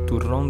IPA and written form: tuˈron (turrón)